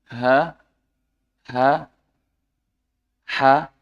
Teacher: katup nafas itu mendekat, mendekat. Jadi nanti keluarnya itu pasti halus.